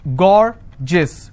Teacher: Gorgeous, 2 syllable, I will stress on gore